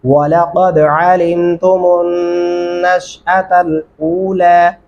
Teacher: वलक़द यहाँ पे कलकला भी करेंगे और क़ाफ को गले से अदा करेंगे